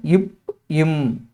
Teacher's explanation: மேல் இதலும் கீழ் இதலும் பொருந்துவதால் பிறக்கும் எழுத்துக்கள்